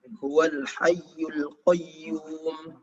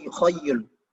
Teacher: Seringkali orang Indonesia membaca Hayyul menjadi Khayyul. Ya, mengubah ha menjadi kho. Harusnya Huwal Hayyul Qayyum.